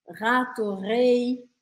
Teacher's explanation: Então eu quero que você fale rato, rei, forçando um pouco essa vibração aqui atrás da garganta, sem usar a sua língua. Rato, rei, tô falando com sotaque francês. · a gente não vai usar a ponta da língua, mas a gente vai usar o fundo da garganta.